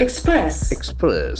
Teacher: Since it is a verb, the accent falls on the second syllable.